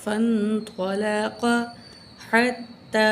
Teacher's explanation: بڑی مد ہے، چار الف کے برابر کھینچ کے پڑھیں گے، کھڑی زبر بھی ہے، تا کو سختی سے پڑھیں گے، ہا کو نکالیں گے.